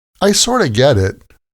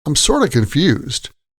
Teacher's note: sort of is usually pronounced sorta in casual speech